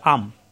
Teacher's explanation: এখানে আছে নুন পড়তে হবে মিম ধরে। আন, ইন, উন নয়ের মতো উচ্চারণ আসে, কিন্তু ধরতে হবে ময়ের মতো, অর্থাৎ মিম ধরে পড়তে হবে যদি এই তানবিন এবং নুন সাকিনের বাম পাশে বা অক্ষরটা আসে।